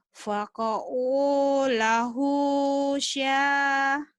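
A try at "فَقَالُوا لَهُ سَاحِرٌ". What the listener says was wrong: Sinnya kecil.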